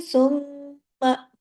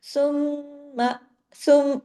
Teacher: सुम्मा में आपने गुन्ना करना है लेकिन आ की आवाज नहीं करनी